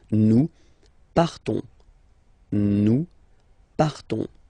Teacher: So classic ending O-N-S, you don't pronounce the S, you just have this on sound nasal